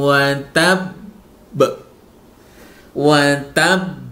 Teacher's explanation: karena ini ada tasdidnya, harus ditahan beberapa saat sebelum dipantulkan. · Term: huruf qalqalah